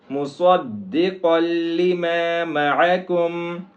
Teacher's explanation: صاد ہے، اس کو موٹا کریں گے، آگے قاف کو بھی موٹا کریں گے۔ مُصَدِّقًا لِمَا مَعَكُمْ، معکم میں عین ہے، اس کو عین کے مخرج سے نکالیں گے۔